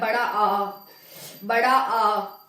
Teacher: बड़ा आ जब हम बोलेंगे तो हमारा पूरा मुंह खुलता है, बड़ा आ, बड़ा आ, पूरा मुंह खुल रहा है।